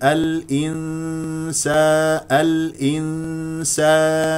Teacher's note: والنون مع السين اخفاء بمقدار حركتين نفتح الفم في الالف الانسان اذهب الى مخرج السين الانسا الانسان